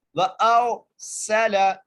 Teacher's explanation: اس کے بعد وَأَرْسَلَ واو کے اوپر زبر ہے، حمزہ کو غا سے ملانا ہے اور موٹا کر کے پڑھنا ہے را کو. وَأَرْسَلَ سین کو سیٹی کے ساتھ، لام کو بغیر کھینچے